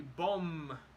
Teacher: when we pronounce the letter M we close our mouths at the end